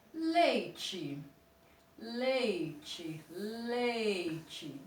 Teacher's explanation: ela descer o óleo eu fiz isso com a minha certinha ela começou na vogal e terminou com uma semivogal então eu tenho um ditongo decrescente